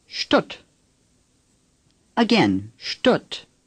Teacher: The ST at the beginning of a word in German is pronounced sht. Imagine an SHT at the beginning of this word and say Stutt.